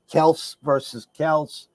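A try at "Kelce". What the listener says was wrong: Kelsey. Got to pronounce the E.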